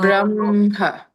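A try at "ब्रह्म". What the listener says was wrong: Ha is good, but just keep it little more subtle. Don't make it come out too much.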